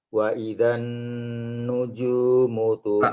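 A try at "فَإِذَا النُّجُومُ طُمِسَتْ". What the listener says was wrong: Fa bukan wa, pakai fa.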